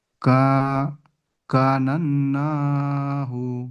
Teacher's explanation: আলিফ মাদ্দাকে এক আলিফ পরিমাণ টান দিয়ে পড়তে হবে